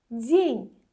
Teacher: D-dan sonra incə Y saiti gəldiyi. D-ni daha incə tələffüz edirik.